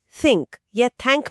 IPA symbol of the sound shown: θ